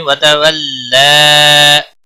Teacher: वतवल्ला लाम के ऊपर खड़ी जबर है एक अलिफ के बराबर खींच कर पढ़ेंगे, बाकी किसी भी हरकत वाले हरफ को खींच कर नहीं पढ़ना है, और वक़फ़ की सूरत में भी एक अलिफ के बराबर ही खींच कर वक़फ़ होगा।